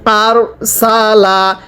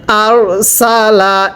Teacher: র সাকিনের পূর্বে যদি এরকম জবর থাকে তাহলে র সাকিন মোটা করে পড়তে হয়